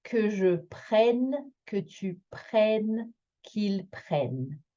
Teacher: Que nous prenions, que vous preniez, et qu'elles prennent. So we have that E-double-N again that makes us do an open E, just as if there was an accent grave on that E.